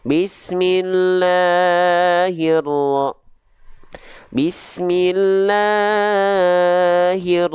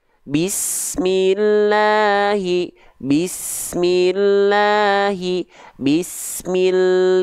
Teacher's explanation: yang sering kali terjadi ya di sini nih dibagian La ini banyak orang melafalkan lanya kepanjangan lebih dari dua harakat